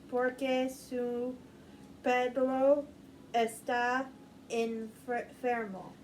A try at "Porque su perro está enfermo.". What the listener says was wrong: I'm still having a problem with your R's, but you know what?